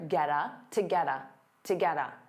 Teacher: So to becomes that unstressed ta, get a combines together